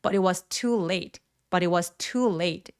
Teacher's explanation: but it was 할 때 얘가 빨리 발음하게 되면 it was, that was, what was 요렇게 아주 문장에서 중요한 핵심 키워드가 아닐니까이 두 개가. 그래서 t를 거의 들릴 듯 말듯 거의 발음을 안 한다고 보시면 돼요.